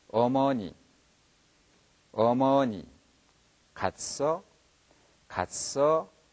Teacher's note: 이것을 이어보시면 으어, 으어 이렇게 발음이 나옵니다. 문제는 어 발음할 때 혀가 입의 가운데 떠있는 현상이 있습니다